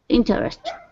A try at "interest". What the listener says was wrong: Yeah, so we don't really pronounce the second E. So pretend it's not there. Interest.